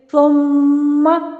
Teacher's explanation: جب نون مشدد ہو اور میم مشدد ہو وہاں پہ آپ نے ہائیسٹ غنہ کرنا ہے، آپ نے زیادہ دیر تک آواز جو وہ ناک میں ٹھہرانی ہے